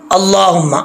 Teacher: अल्लाह का मोटा पढ़ा जाएगा , पहले ज़बर है, आगे मीम है, गुना करेंगे, हाथ दो